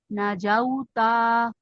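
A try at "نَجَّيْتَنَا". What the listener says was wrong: اچھا لمبا نہیں ہونے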